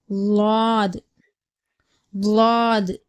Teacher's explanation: நாவின் ஓரம் வலதுபுறம் அல்லது இடதுபுறம் மேல் கடவாய் பற்களின் வேரை தொடும்போது லாது உடைய உச்சரிப்பு பிறக்கப்படுகிறது அதாவது நம்ம நாவினுடைய ஓரம் இருக்கு இல்லையா அது வந்து நம்முடைய வலதுபுறம் இல்ல